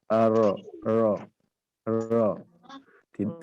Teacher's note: huruf ro itu di ujung lidah bertemu dengan langit-langit depan mendekati gusi. Ya, agak ke dalam sedikit.